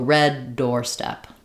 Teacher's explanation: it's going to have first syllable stress, but secondary stress on the second syllable, meaning we still have a clear vowel there